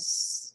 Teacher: सीन में एयर होती है तो इसमें विस्लिंग साउंड आ जाती है